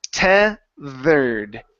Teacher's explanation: strong T at the beginning. Okay, voiced TH in the middle.